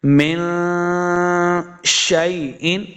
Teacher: نزل اللہ، ما نزل اللہ من شیء، من، دیکھیں نون ساکن کے بعد شین حروف اخفا سے ہے، تو یہاں اخفا کا قاعدہ ہے، یعنی غنہ کر کے پڑھیں گے